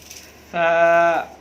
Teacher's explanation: सा को बिल्कुल नरम अदा करना है, यानी ज़बान की नोक, ये आगे वाला हिस्सा ज़बान का, और ऊपर के 2 दांत जिन्हें सनाया उलिया कहा जाता है, उनके किनारों के साथ इसको लगाना है। सा। अगर हम ऐसे नहीं पढ़ेंगे सा, तो यही सा जो है बाज़ लोग सीन पढ़ जाते हैं।